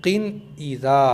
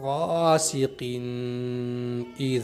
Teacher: जल्दी पढ़ेंगे यानी किन पर बहुत देर तक नहीं रुकना है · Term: इजहार